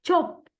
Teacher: And the chop is affricate. It is a combination of a plosive followed by a fricative.